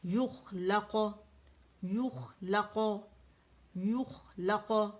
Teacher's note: پھر لام باریک ہے اور قاف موٹا ہے تو موٹا قلقلہ ہوگا